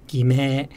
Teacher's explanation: in slower speech, it kind of starts low, rises, and stays high, as in 偽名. But in rapid speech, it's more or less flat, as in 偽名.